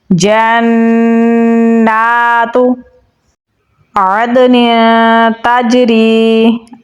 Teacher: نون کے اوپر تشدید ہے تو غنہ کریں گے. کھڑی زبر بھی ہے تو اسے ہم لمبا بھی پڑھیں گے.